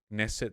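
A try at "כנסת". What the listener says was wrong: It's not Knesset, it's Knesset. You have to pronounce the fucking K. That's why it's written.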